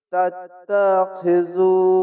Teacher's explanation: আর তা অক্ষরটি তাসদি আছে তার জন্য দুবার উচ্চারণ হবে